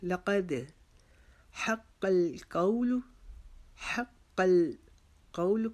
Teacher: لقد یہاں پر لام کو باریک پڑھیں گے، قاف کو موٹا کریں گے، دال کے اوپر جزم آ گئی ہے، اس کے اوپر ہم قلقلہ کریں گے